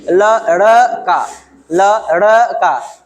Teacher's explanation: जिसके बोलने में जिह्वा जो है उल्टी हो जाए, इसका नोक उल्टा हो जाए, ये जो सामने वाला नोक है वो उल्टा हो जाएगा, तो उसको कहेंगे उत्क्षिप्त व्यंजन। · तो ड़ जैसे बोल रहा है, जीभ क्या हो रहा है जी, टर्न हो जा रहा है ना, पीछे बैक हो जा रहा है और आकर के फिर मार रहा है और आगे क्यों बढ़ रहा है, ल ड़ का। तो ड़ और ढ इसको बोलते समय जीभ उल्टा हो जाता है, इसलिए इसको कहते हैं उत्क्षिप्त व्यंजन